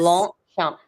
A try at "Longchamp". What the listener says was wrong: No, don't say the P. Longchamp. Yeah, Longchamp. Don't say the P. Because you're used to it, probably. No, Longchamp.